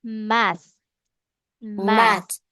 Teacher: Your tongue should be touching your upper teeth. >> Your tongue should be touching the back of your upper. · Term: th sound